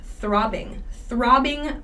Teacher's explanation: this one throbbing pain this one is hard to pronounce so there's that th at the beginning an unvoiced th